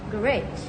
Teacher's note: American English tends to stress the last syllable.